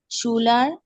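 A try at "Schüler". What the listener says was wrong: শুইলার, শুইলার umlaut আছে।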